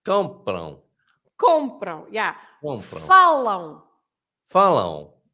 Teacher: lots of people stress the end and they shouldn't because the M is not there.